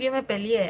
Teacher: en el español peruano tienden a diptongar los hiatos, ¿no? Sobre todo estos donde se repiten las E, ¿no?